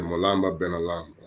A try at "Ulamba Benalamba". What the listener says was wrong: Ulam, not Mulamba, drop an M. Ulamba Benalamba.